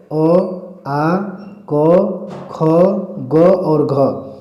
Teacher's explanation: इनके उच्चारण में किसका इस्तेमाल होता है? कंठ का, और इन्हें कंठ वर्ण के नाम से जाना जाता है